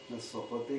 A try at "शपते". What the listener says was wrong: स्वपते कहाँ है? शपते है। स नहीं है, श है, तालव्य।